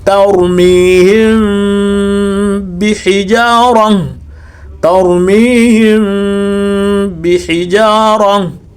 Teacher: sio mbi, inatakiwa iwe bi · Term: ikhfa'u